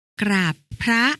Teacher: อ่านออกเสียงพยัญชนะต้นทั้ง2ตัวหน้าเป็นเสียงกล้ำพร้อมกัน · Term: คำควบแท้